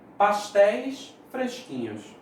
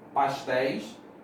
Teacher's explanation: Porque tem esse acento. Ei é um ditongo aberto e está na posição de oxítona.